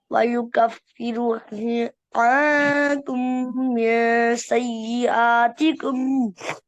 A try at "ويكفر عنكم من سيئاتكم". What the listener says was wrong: ويكفر را मोटा करें سيئ